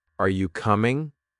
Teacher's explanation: Are you coming? Voice rises at the end. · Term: rising intonation